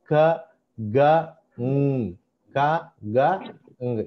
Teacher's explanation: Soft ప్యాలెట్ దగ్గర generate అయ్యే sounds ని వీలార్ అంటాం.